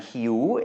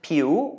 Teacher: It has a rising tone, and so does piu, because it's also a high-class consonant